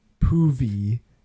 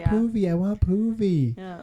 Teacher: he cannot pronounce s at the start of a word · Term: consonant clusters